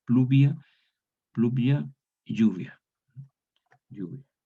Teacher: pierde la consonante inicial y la L palataliza